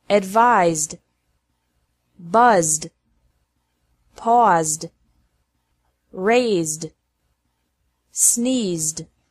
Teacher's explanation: e d is pronounced like d after verbs ending with a z sound